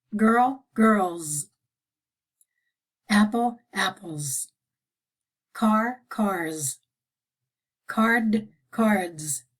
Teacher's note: if it's a voiced consonant or a vowel it's pronounced z